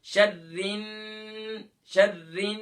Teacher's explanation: taking the voice into nose just 2 second, یعنی کہ 2 second کے لیے آواز کو ناک میں چھپانا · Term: غنہ